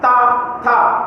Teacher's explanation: जो आपकी जीभ है वो दांतों को टच करेगी